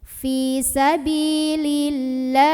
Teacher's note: Mad tabi'inya fathah panjang atau fathah berdiri pada huruf lam, huruf yang disukunkannya ha, maka dibaca panjang lahnya ini boleh 2, boleh 4, boleh 6 harokat asal konsisten dalam sekali membaca. · alif lam pertama ini nggak usah dibaca, dari li langsung masukkan ke lah, diidghamkan ya, idgham syamsi. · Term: mad arid li sukun